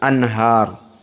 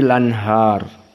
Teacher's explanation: al-anhar ini juga spesifik yang menjadi penjeda qiraah Wars dengan jumhur maka alanhar dibaca annaql jadi lanhar